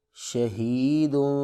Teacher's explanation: ہا حروف حلقی میں سے ہے اور اس کو سینے سے ادا کریں گے